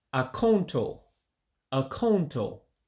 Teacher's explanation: But that second A in the word is dropped. That's why you say Ah-Koen-Toe instead of account.